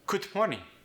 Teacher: In morning, we lost the G.